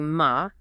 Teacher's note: A rising tone gives you ma, meaning hemp.